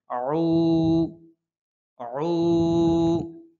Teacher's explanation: আইন হচ্ছে কণ্ঠনালীর মধ্যখান থেকে উচ্চারণ করতে হয়